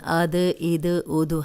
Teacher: اب دال جو ہے وہ ان 5 حروف میں سے ہے، جب ان پہ جزم آتی ہے تو ہلا کے پڑھے جاتے ہیں